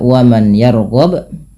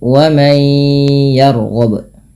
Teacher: Yaitu di sini huruf nunnya dimasukkan ke ya dan kemudian ditahan dengan gunnah. Maka dinamakan idgham bi gunnah.